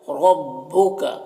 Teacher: را کے اوپر زبر ہے، را کو پر پڑھیں گے